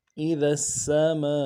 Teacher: تو کھینچیں گے اس کو 3 الف کی مقدار میں